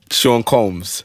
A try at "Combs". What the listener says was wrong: Coombs. Coombs. It's Coombs, not Combs. But it's pronounced Coombs. Coombs.